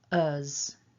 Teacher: we've got the schwa and a voiced z sound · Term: weak form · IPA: /ə/